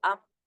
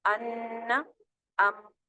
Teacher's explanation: میم آ گیا نون کے بعد تو ام، نون کی آواز بالکل ختم ہو گئی ہے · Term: کامل ادغام